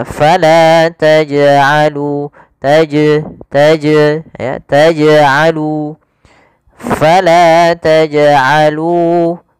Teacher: Harusnya tidak ditambah dengan hamzah. Hanya memantul saja. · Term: qalqalah